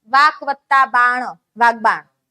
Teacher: અઘોષનો અલ્પપ્રાણ આપ્યો હોય તો એની સાથે ઘોષનો અલ્પપ્રાણ આવે